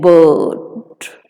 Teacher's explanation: Central part of the tongue is raised, lips are unrounded. So, it is a central vowel, unrounded vowel, and the tongue is raised to a height between half open and half closed positions.